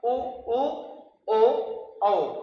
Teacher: वे स्वर जिनके उच्चारण में होठ गोल हो जाते हैं वृत्तमुखी कहलाता है